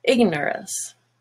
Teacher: but now nor is no longer orange, it's just ner, ignorance. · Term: schwa